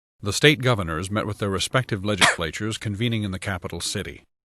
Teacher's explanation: in the word legislatures the s is covered up and it's actually missing it's absent and instead there's a cough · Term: missing phoneme